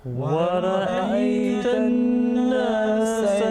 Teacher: Okay, remember in this last example, وَرَأَيْتَ النَّاسَ, you know, noon gunna, because noon with tashdid, so you have to produce nasal sound